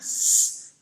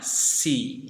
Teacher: Di bunyi s itu adalah bunyi yang voiceless, tidak ada getaran bunyinya.